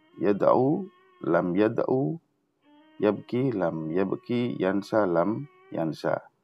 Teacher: Alifnya juga dihilangkan. Phonetically, the long vowels are shortened